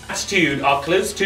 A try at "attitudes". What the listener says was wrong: You're saying attitudes like you're sneezing.